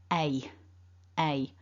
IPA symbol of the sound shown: eɪ